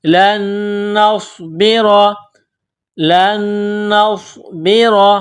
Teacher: نون ساکن سے پہلے والے حرف لام کو نون کے ساتھ ملانا ہے، پلس کرنا ہے، نون کو صاد کے ساتھ ملانا ہے، صاد میں سیٹی کی آواز پیدا کرنا ہے، صاد کو موٹا کرنا ہے۔ لام نون زبر لن، نون صاد زبر نوس، لن نوس، با زیر بی، را زبر را، لن نصبر، لن نصبر، را کے اوپر زبر ہے تو را کو موٹا کرنا ہے۔ · نون ساکن کے بعد دوسری نون ہے جو مشدد ہے، تو یہاں آواز ناک میں چھپائیں گے، غنہ کریں گے۔ نون ساکن سے پہلے والے حرف لام کو نون کے ساتھ ملانا ہے، پلس کرنا ہے، نون کو صاد کے ساتھ ملانا ہے، صاد میں سیٹی کی آواز پیدا کرنا ہے، صاد کو موٹا کرنا ہے۔